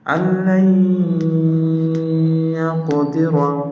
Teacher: লামের জায়গায় গুণনা হয়নি কিন্তু ইয়ার জায়গায় গুণনা হয়েছে